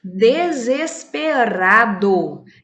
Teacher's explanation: na palavra desesperado o r está entre vogais porém dizemos que ele tem um som fraco